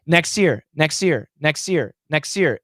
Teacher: that s can cancel the t so we can say next year next year next year next